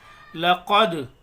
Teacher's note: दाल साकिन है, कलकला करेंगे